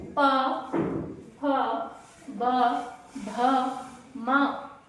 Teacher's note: उसके बाद है प फ ब जब भी आप बोल रहे हो तो आपके होठ आपस में टच हो रहे हैं यानी स्पर्श कर रहे हैं